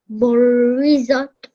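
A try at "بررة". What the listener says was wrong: Well done. Well done.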